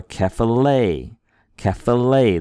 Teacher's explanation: We put a little more oomph on that last syllable.